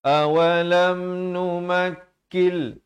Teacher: Nutaqattaf min ardina awalam numakkil idgham bila gunnah. Asalnya numakkin, tapi datang lam terus masuk tanpa dengung.